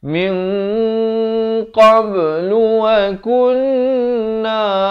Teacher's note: ikhfa hakiki dibacakan dengan samar dan dibacakan dengan tebal kerana qaf merupakan huruf isti'la, 2 harakat.